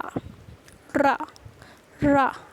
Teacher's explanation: हमारी जो टंग है वो क्या बेलन की तरह रोल हो जाती है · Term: लुंठित